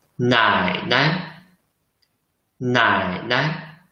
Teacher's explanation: See, the second syllable is short and light.